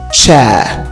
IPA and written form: tʃeə (chair)